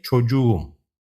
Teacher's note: the K shifts to a soft G, to make it easier to pronounce